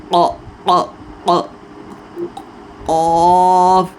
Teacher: زبان کی جڑ اوپر تعلق ساتھ لگائیں گے